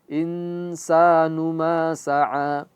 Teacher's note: Nun mati bertemu dengan saia ikhfa. Insanu dia ghunah dan masukmasuk ke hidung.